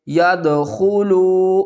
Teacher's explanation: واو مدہ ہے، 1 الف کی مقدار کھینچ کر پڑھیں گے